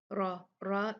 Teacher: را اس میں بھاری ہوگا، مفخم ہوگا